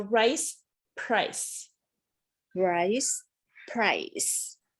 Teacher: american r is pulled back and it's held tensely